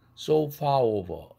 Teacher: 모음과 모음이 연결되니까 불편해서 R을 집어넣습니다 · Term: intrusive R